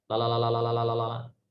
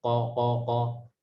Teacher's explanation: lam itu ada di ujung lidah, sedangkan qaf itu berada di belakang bagian lidah